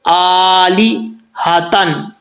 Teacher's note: यहां पे हमजा के ऊपर खड़ा जबर है स्टैंड जबर है इसको एक अलिफ की मदार लंबा करेंगे